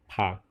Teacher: ada pa ini udaranya sedikit keluar ya dari mulut kita